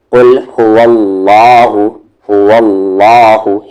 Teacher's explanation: اللہ کے لام کو یہاں ہیوی کریں گے کیونکہ اس سے پہلے والے حرف پر زبر ہے